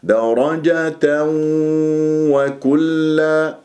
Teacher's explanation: يكون عندي تنوين فتح جاء بعدها واو وكلا، واو وكلا، إذا إدغام بغنة ومع ضم الشفاه